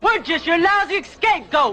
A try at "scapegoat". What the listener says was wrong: Sam, the man puts the emphasis on the wrong part of the word.